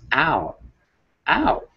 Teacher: All it says is, oh, it starts with the sound, the A, and then it quickly goes to O. So it's ow, ow. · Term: diphthong